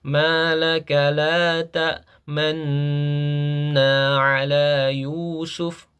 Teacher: kita mengidgamkan nun yang pertama ke nun yang kedua sembari memonyongkan bibir kita sebagai isyarat dhammah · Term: ismam